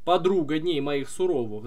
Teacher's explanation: на второй слог падает ударение и потом эта структура двойная повторяется то есть у нас stope stope stope stope по два слога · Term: ямб